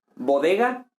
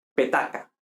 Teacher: bodega, las oclusivas sonoras, petaca, las oclusivas sordas